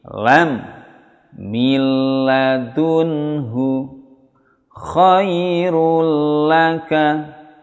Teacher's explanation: Nun sukun bertemu lam. Maka membacanya tidak mendengung. Jangan milla, jangan kelamaan menahan lamnya. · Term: idgham bila gunna